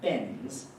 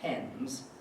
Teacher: neither of the two speakers has very much aspiration on voiceless plosives